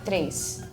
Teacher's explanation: at least in my accent, when I pronounce it, it sounds like there's an I.